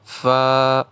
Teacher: فا کے ساتھ تلفظ میں الف ہے تو ایک الف کے برابر کھینچیں گے